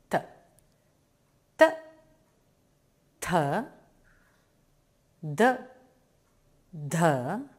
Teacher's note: pronounced from the tongue touching behind the upper teeth